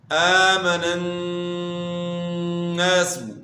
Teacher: نون مشدد میں آپ نے غنہ کرنا ہے ایک الف کے مقدار کے برابر